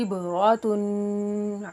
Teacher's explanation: इबरातुन में बा हरूफ़ कलकला है, इसको हिलाकर पढ़ेंगे। रा पुर हरूफ है, इसको मोटा पढ़ेंगे। ता के ऊपर हरकत तनवीन है, गुन्ना करके पढ़ेंगे।